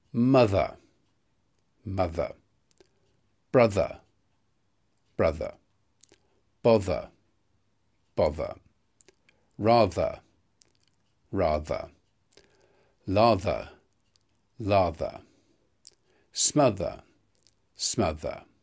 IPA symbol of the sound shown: ð